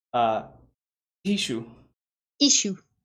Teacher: Should be a very strong glottal stop, which is hard for most English speakers to do.